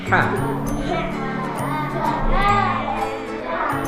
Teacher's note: ketika kita mengucapkan ha yang keluarnya di tengah kerongkongan ini, kerongkongan kita agak terjepit